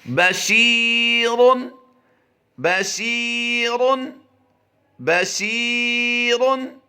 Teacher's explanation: شی کو لمبا کریں گے، شین یازے شی، یا مدہ کا قاعدہ ہوتا ہے، را کو پر کر دیں گے ہم، با کو لمبا نہیں کریں گے